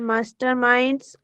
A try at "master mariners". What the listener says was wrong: Master mariners. Mariners, not minds. Master mariners.